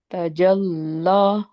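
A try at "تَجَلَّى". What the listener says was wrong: जीम मोटा हो गया आपका. तजल्ला.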